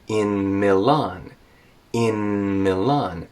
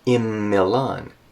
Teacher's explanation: carefully separate these two words in Milan in Milan and have a clear NM sound · n plus M can turn into just m so IM Milan that works but that only happens in very